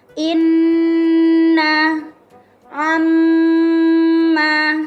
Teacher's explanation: Qaidah gunnah, setiap ada huruf nun atau mim bertasydid. Cara membaca, mendengung selama 1,5 alif atau 3 harokat.